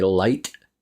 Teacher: I say light with a very short vowel for I because I'm Canadian and we have a thing called Canadian Rising that uh uh